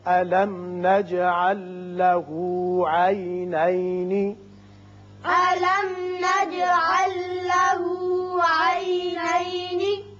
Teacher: میم پر اظہار شفوی، جیم کی صفت قلقلہ، یہاں لام ساکن آگے لام سے ملائیں گے، ادغام اس کا بغیر غنہ ہوگا